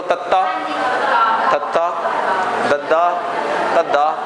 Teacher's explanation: साडी जीभ दी नोक उपरले दंदां नूं स्पर्श करदी है, दंद पठार नूं, जिथे दंदां दा मुੱਢ ਹੁੰਦਾ दंद पठार कहने असीं ਉਹਨੂੰ भाषा कहंदे। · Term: ਦੰਤੀ व्यंजन